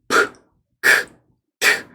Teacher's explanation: 파열음, 폐쇄음 그렇게 표현을 하는데요. 터지는 소리예요.